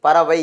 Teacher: அது ரெண்டு மாத்திரைல இருந்து ஒரு மாத்திரையா குறையுது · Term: ஐகார குறுக்கம்